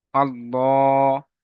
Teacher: সঙ্গে আল্লাহ লাম মুশাদ্দাত লামের উপরে তাসজিদ তাসজিদ অক্ষরের ডানদিকে লা লামের ডানদিকে সাবার এসছে তো এখানে পুর করে পড়তে হবে অর্থাৎ মুখ গোল করে পড়তে হবে আল্লাহ লামের উপরে খাড়া সাবার খাড়া সবার আলিম মাদার সমান তাই